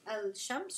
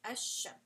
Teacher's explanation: You're going to just pronounce a and then straight to the sheen, right? You're not going to say al shams, you're going to say ash shams. · It is المتقاربان rule, and basically it is going to be the rule of إدغام كامل applied to it, right? So you basically drop the sound of the lam, and you are just going to pronounce the next letter after it. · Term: Huruf Al-Shamsiyya